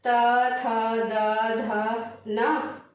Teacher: जीभ हमारा क्या हो रहा है, दांत से जो है वो टकरा रहा है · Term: दंतव्य व्यंजन